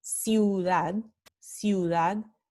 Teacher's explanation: it's a semi-vowel or semi-vocal because it is pronounced for a shorter amount of time. · the U is a full vowel with full length of pronunciation, whereas the Y is a half vowel because it is pronounced for a shorter amount of time than it would otherwise be pronounced in a word like camino.